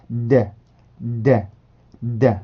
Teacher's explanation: 성대 울림을 넣어 주셔서 발음을 해주시면 되고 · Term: D 발음